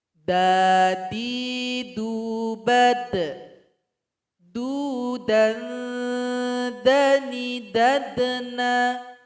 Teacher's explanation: Ketika telah ditempelkan, maka huruf dal ini ketika dia sukun ada bunyi pantulan atau qalqalah. Kemudian ketika membaca suara kita juga tertahan terlebih dahulu.